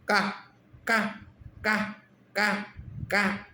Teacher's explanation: कै के अंदर गला काम कर रहा है।